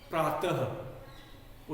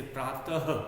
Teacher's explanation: ह का भी इसमें जरा सा समावेश होता है, मिला होता है। जैसे प्रातः, तो विसर्ग का की ध्वनि ह की तरह है, अल्प ह की तरह हम कहें।